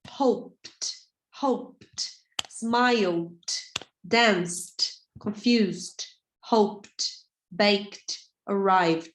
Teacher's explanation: Não, você não pronuncia o E. É como se ele não tivesse ali